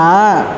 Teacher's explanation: மேல் பல் வரிசை இது ரெண்டையும் ஓபன்ல வச்சிருக்கிறோம் நடுவுல நாக்கை கொண்டு வர்றோம் நடுவுல நாக்கை கொண்டு வர்றோம் ஆனால் மேல் வரிசை பல்லுலையோ கீழ் வரிசை பல்லு எங்கயும் டச் ஆகாம ஏர்ல இருக்கணும்